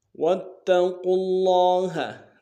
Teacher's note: قاف کو لفظ اللہ کے لام کے سامنے لانا ہے، تشدید زور دیں گے ، لام کے اوپر کھڑا زبر ایک اعتدال میں کھینچیں گے،